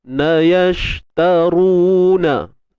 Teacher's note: Ru kita kena tebalkan 2 harakat, dan di sini ma asli kena tebalkan.